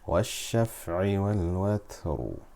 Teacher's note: Once again the ra with the kasra, so we look at the letter before, which is sakina. The letter before that has a fatha, so we make the ra full mouth.